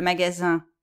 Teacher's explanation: le magasin où on va acheter les choses, c'est nasal. Il n'y a pas de in, c'est un.